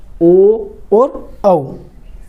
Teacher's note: कंठोष्ठ्य, जो कंठ और होठ के संयोग से बोले जाते हैं